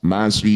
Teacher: Cara baca rok dengan tipis, tempelkan ujung lidah di pangkal gigi seri atas. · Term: tarkik atau tipis